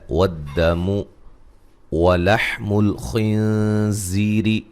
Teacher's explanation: خوا کو موٹا ادا کریں گے، نون ساکن کا باریک اخفا ہے، زی یا مدہ ہے، اور را کو باریک پڑھا جائے گا